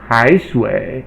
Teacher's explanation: the falling and then Rising tone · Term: third tone